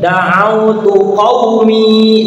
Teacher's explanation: mi-nya panjang 2 harokat